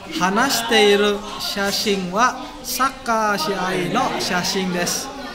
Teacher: hanashiteiru itu adalah pelesapan vokal i. Hanashiteiru bukan hanashiteiru.